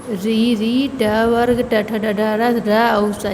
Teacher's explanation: मूर्धा मूर्धा से इसका उच्चारण हम करते हैं।